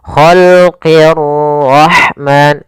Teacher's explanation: ra di sini ra tafkhim, ra-nya harus dibaca dengan tebal. Ra tafkhim, ra tebal.